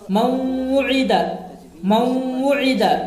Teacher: نون ساکن کو واو سے ملا کر غنہ کے ساتھ پڑھیں گے